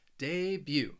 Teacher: you're not going to hear that T at the end of the word. It's almost that second syllable.